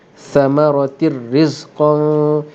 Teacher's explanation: Dan bacaan di sini idgham sepenuhnya, idgham kamil, maka bunyi ra. Samaratir. Bunyi ra terus.